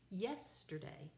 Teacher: three syllables with the accent on the first one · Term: dactylic